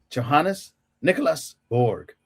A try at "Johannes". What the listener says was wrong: Johannes. Johannes? Yeah, it's not a J, it's a Y. Johannes.